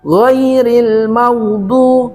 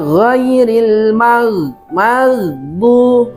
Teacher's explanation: ghain itu di ujung tenggorokan